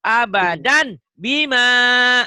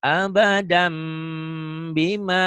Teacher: Nah, bunyi tanwin itu N. Nah, tanwin ini karena ketemu ba, bunyi N-nya berubah menjadi M. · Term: iklab